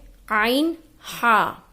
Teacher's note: عین ہا حروف ہلکی ہے جو حلق کے درمیانی حصے سے نکلتا ہے